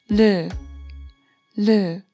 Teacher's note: Next one is 리을, 리을, and it has a L or R sound. It's somewhere between L or R